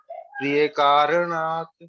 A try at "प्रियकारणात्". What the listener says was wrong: The akara, you can make it a bit more full. Priya karanat.